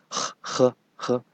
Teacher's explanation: In Chinese, this H is a little stronger than English H.